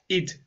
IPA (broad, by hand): ɪd